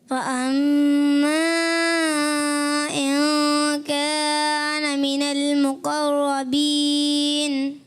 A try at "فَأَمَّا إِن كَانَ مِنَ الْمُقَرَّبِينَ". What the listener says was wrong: ماشاء اللہ. جی دوسرے پڑھیں.